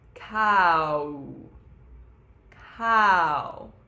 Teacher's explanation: it's actually two vowels even though it's one syllable · So there's the ka, right, of cow, and then we go from all the way to a closed oo to make that kind of W sound that we have in English.